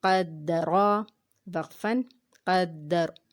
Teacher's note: قاف کو ہم نے یہاں پہ موٹا پڑھا اور را جو ہے اس کے اوپر زبر ہے، اس لیے اس کو بھی ہم نے موٹا ادا کیا